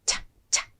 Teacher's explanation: the ch sound is like a little explosion happening in your mouth